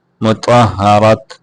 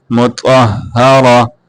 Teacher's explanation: مطہرۃ مطہرت یہ غلط ہے مطہرہ بلکہ اصول یہ ہے کہ اس کو تا کو وقف میں ہا سے بدل دیتے ہیں